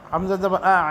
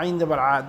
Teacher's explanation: حمزہ جو ہے یہ ادنائے حلق سے ادا ہوتا ہے اور عین جو ہے وہ وسط حلق سے یعنی کہ درمیان والے حصے سے ادا ہوتا ہے